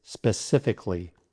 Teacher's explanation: Now, some people mistakenly say pacifically, but the correct pronunciation is specifically, with 4 syllables. Remember, drop the A in Cali.